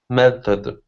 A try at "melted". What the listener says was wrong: Good. One more time.